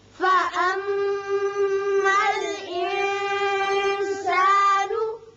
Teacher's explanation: میم مشدد ہے، غنہ کریں گے اور نون پر اخفا ہوگا